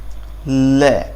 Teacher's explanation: जब हम ल का उच्चारण करते हैं तो हमारी जीभ दंत से टकराती है, तो इसलिए इसको दंत श्रेणी में रखा जाता है।